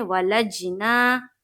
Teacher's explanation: جیم میں قلقلہ ہو رہا ہے